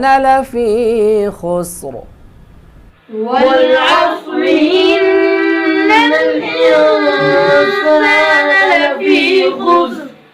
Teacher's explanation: جب ہم لفی خسر یہاں پر وقف کریں گے تو یہ را موٹی ہوگی، کیونکہ را ساکن سے ما قبل حرف بھی ساکن ہے اور اس کے ما قبل پیش ہے.